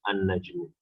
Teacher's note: So najmun, since najmun is nakira, so to make it marifa, we do it as an-najmu. We add alif lam, but since it's huruf shamsi, so alif lam will not be pronounced